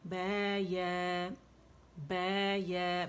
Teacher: با کے لیے دونوں ہونٹوں کے گیلے حصے مضبوطی سے پریس کریں گے